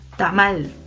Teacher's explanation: La sílaba tónica es mal.